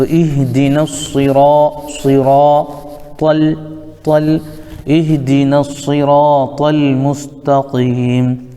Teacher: اس کے بعد را ہے الف مدہ، تو اس را کو پر پڑھیں گے، اور یہ طا بھی حروف مستعلیہ میں سے آتا ہے، اس کو بھی پر پڑھیں گے